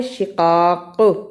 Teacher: تدو، تولو، دونوں میں واو لین آئی ہے، دو اور لو صحیح ادا کرنا۔ شقاق، رکنے کی صورت میں قاف پر قلقلہ کرنا ہے